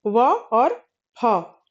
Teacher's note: निचले होठ और ऊपर के दांतों के स्पर्श से जिन वर्णों का उच्चारण होता है, वह दंतोष्ठ कहे जाते हैं। और इसमें व और फ ये दो वर्ण आते हैं। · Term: दंत्योष्ठ, दंतोष्ठ्य